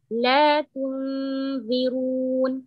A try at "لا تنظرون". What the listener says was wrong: Make the ظاء heavy. That's what I wanted to remind you, that we don't need to say, okay, with the غنة in the light letters is light, in the heavy letters is heavy.